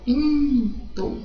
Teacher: Na palavra pinto, eu tenho 4 fonemas porque eu não tenho o som do N